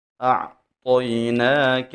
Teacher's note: جب حروف مدہ کے بعد حمزہ دوسرے کلمہ میں آ جائے تو وہاں پہ مد جائز ہوتی ہے، تو ہم مد جائز کو 3 الف کے برابر کھینچ کے پڑھتے ہیں۔ اعطیناک حمزہ اور عین کو خوب واضح ادا کریں گے، طا کو موٹا پڑھیں گے